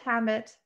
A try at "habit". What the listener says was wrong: Sounded like you said helmet.